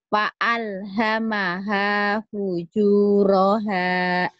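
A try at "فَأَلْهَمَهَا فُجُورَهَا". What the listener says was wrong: Fa'al, bukan pahala. Fa'alhamaha fujuroha.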